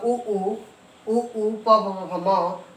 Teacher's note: उ प प म का उच्चारण स्थान क्या है दोस्त, ओठ है